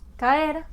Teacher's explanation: Por ejemplo, si yo tengo la palabra caer, la A es una vocal abierta, la E es una vocal abierta, entonces vamos a tener una separación natural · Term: hiato